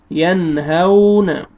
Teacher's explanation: نون ساکن کے بعد حروف حلقی میں سے 6 لیٹرز میں سے ہا آ رہا ہے، یہاں پہ آپ نے اظہار کرنا ہے، آگے واو لین ہے، ہا کو آپ نے نرمی سے ادا کرنا ہے، ینہون۔